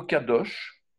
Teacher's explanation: La lettre, c'est la quantième, la 19e, la lettre kouf ou kof, qui veut dire le singe, l'imitateur, qui veut dire aussi la nuque. C'est une consonne occlusive uvulaire sourde.